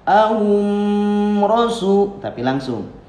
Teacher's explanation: mim menghadapi ro, hum rasu, namanya izhar syafawi. Dibacanya karena izhar itu jelas, tidak lama. Misalkan ahum rasu, tapi langsung.